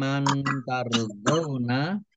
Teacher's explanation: mimnya ada tasdidnya, dibaca gunah atau mendengung, tahan 2 harokat